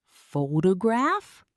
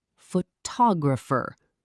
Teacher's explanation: in the word photograph, the stress is on the first syllable. But in photographer, the stress shifts to the second syllable.